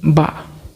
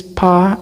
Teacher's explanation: the sound ba is called as voice sound, and then the sound pa is voiceless, because when we produce ba, there is a vibration ba, and when we produce pa, there is no vibration. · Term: voiced